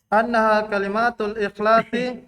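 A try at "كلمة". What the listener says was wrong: Kenapa begitu bacanya ya? Annaha kalimah. Kalimah, bukan kalimah. Enggak. Masih salah. Itu berarti terbawa di lisan, kebiasaan. Bukan kalimat. Kalimah.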